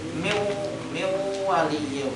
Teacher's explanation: bigunah ya kan baca miu ditahan ya kan karena di tatwil memanjangkan gunah dan ada bunyi lewat hidung dan bunyi lewat hidung ini yang lebih banyak ya kan miu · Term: idgham bigunah